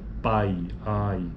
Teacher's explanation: sílaba ou segmentos vocálicos e é um ditongo decrescente porque veja o pico da sílaba já aconteceu já ocorreu no A